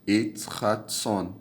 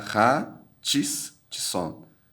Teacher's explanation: Perceba que a duplicação é para dar ênfase no Tsadê. Não é para eu pronunciar Ra, Tis, Tson.